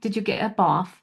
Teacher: So that TH in bath becomes an F sound.